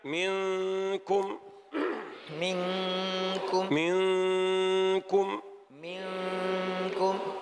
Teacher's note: نحن مع النون لم ننطقها، لم نقل منكم كما قلنا من عمل، لم يلتصق لساننا في مخرجها، هي غنة فقط